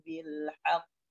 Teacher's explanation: Jadi ditahan dulu baru dipantulkan